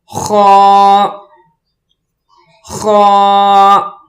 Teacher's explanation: اس لفظ کو پڑھنے کے لیے گلے سے آواز نکالیں گے، تھوڑی سی بیچ میں خراش بھی ہو، جیسے خا خا۔